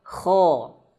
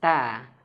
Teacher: Ketika tebal ngambek ko dan ketika tipis tarik bibirnya ta